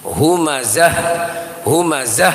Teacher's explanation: di ujung ayat itu ada Ta marbutoh yang dimatikan maka menjadi hak maka hentakannya hak itu harus jelas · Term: hentakan ha